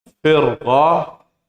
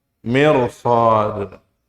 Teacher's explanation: jika ada huruf ra sukun sebelumnya kasrah, setelahnya huruf isti'la, maka ra ini dibaca tafkhim.